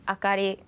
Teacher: It's totally flat, and we don't emphasize on any single words.